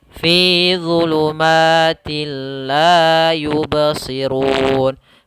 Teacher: digunakan di sini hukum bacaannya idgham bila gunna bila gunah yaitu Apabila ada nun mati atau tanwin bertemu dengan lam maka Nun suara nunnya atau suara tanwinnya langsung masuk ke lam